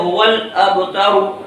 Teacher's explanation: حمزہ کی تحقیق کرتے ہوئے پڑھیں گے، با میں قلقلہ کریں گے